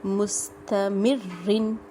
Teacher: را کے نیچے 2 زیر ہیں، باریک ہوگا، ٹھیک ہے، لیکن شدت سے ادا ہوگا کیونکہ اس کے اوپر شد ہے